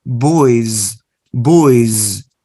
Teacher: So you write the letter S, but you pronounce with the sound z